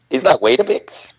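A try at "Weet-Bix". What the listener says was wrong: Just Wheat-Bix. No A.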